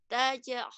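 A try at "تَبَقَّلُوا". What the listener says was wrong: Bukan taj, ini ba, tabe.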